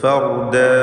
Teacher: ഫർദ എന്ന അന്ത്യത്തിൽ വഖഫ് ചെയ്യുമ്പോൾ അലിഫിന് 2 ഹറക്കത്തിൻ്റെ അളവിലുള്ള ദീർഘമേ ഉണ്ടാവുകയുള്ളൂ, അതിൽ കൂടുതൽ നീട്ടരുത്.